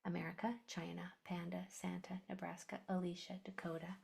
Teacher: Any vowel can change to the schwa sound, such as a at the end of a word.